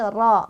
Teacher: ro berbaris fathah dibaca tafkhim, artinya ditebalkan. Ro ya, bukan ra tapi ro.